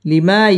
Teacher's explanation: জবরের বাম পাশে খালি আলিফ মদের হরফ এক আলিফ টেনে পড়তে হবে